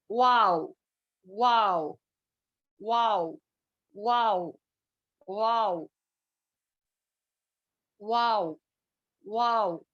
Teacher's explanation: دونوں ہونٹوں کو گول کرنے سے واو ادا ہوتا ہے، نہ کہ ملانے سے